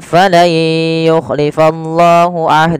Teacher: kita panjangkan sepanjang empat harakat sebagaimana mad jaiz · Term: mad silah thawilah